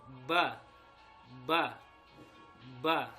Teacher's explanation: mengucapkannya keluarnya dari dua bibir Bertemunya dua bibir